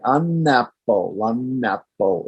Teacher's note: If I say an apple, it flows very easily off the tongue, right? By adding that extra N there.